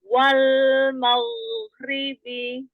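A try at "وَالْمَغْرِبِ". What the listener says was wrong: Jadi enggak wal maghribi. Jadi terlalu cepat. Wal maghribi. Ya, selesai lam sukunnya.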